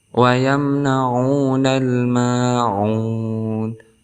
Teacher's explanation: Kemudian nal di sini alif lam dibaca jelas, maka kita hukumi sebagai al-qamariyah karena ada huruf alif lam bertemu dengan salah satu huruf al-qamariyah yaitu mim. Kemudian ma di sini ada huruf mad tabi'i sebelumnya berharakat fathah, maka kita hukumi sebagai mad tabi'i ataupun mad asli, panjangnya 2 harakat.